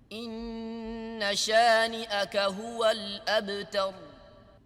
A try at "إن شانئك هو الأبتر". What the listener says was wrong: Again, the noon. شانئك ni هو الأبتر. Okay, tar, tar. Again, not rolling the ra. Abtar, abtar. No, abtar. Here this is inna. Here this is inna. Again, subtle but important difference.